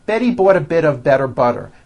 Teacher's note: notice that you do not hear any T sounds TT they're only D's d d which are voiced go over